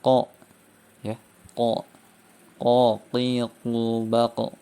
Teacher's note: Sedangkan kaf dan qaf tidak terdapat suara atau nafas yang keluar. Jadi bersih, tidak ada nafas yang keluar.